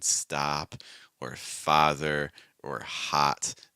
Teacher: keep the back of my tongue, the middle of my tongue, and the front of my tongue down against the bottom of my mouth. And the goal is to produce a sound that's like ah, ah, ah, ah, ah, ah. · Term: ah sound